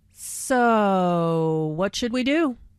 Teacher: notice how the O sound is drawn out here, combined with the intonation which shows boredom